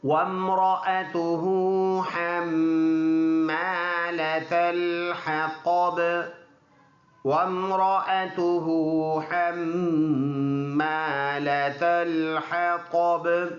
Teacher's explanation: اور اگلا لفظ میم ہے، میم کے اوپر شد ہے، اور ایسے شد والے حرف میں غنہ ہوگا۔ غنہ کہتے ہیں ناک میں آواز لے جانا، 1 الف کی مقدار۔